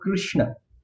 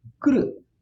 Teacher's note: because there is a Samyoga after the Kru, the Kru actually, when you speak it, you stress. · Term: guru